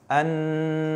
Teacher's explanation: An-nas yang pertama dia adalah idgham syamsiyyah, kemudian karena nunnya tasydid, maka hukumnya adalah gunnah. Bagaimana gunnah? Harus didengung. An-nas. Dan terakhirnya ada mad tabi'i, kemudian bertemu dengan waqaf.